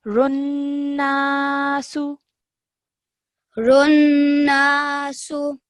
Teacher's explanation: you just did not elongate the na sound out for 2 seconds because this is an alif madda. So we need to elongate the sound.